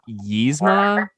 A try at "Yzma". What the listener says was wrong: It's just Yzma. No why. Yzma. Yzma.